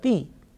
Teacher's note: the letter ta with kasra, ti, it has been prolonged because of ya, that is a harf madda